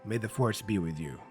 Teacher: The and be are both function words, what we call function words, so they get de-emphasized.